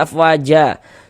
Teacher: Sebelum alif sebelah sininya ada harokat fathah, tanda baca fathah, maka huruf yang memiliki harokat fathah dibaca panjang, sehingga wa dibaca panjang. Mad tabi'i panjang 2 harokat.